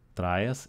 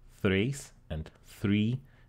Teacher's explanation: We have another lenition from stop to fricative for the T.